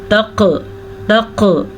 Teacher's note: تقربوہن، قاف کے اوپر ساکن ہے تو کلکلا ہوگا، تق ایسے جھٹکے کی جو آپ کو آواز آ رہی ہے اسی کو کلکلا کہتے ہیں۔ قاف کو پر پڑھیں گے، قاف حروف مستعلیہ میں سے ہے اس لیے پر پڑھا جائے گا۔